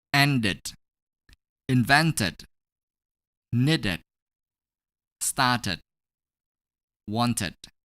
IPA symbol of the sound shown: id